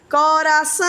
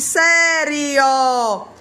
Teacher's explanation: não sai pela boca sai pelo nariz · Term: nasalização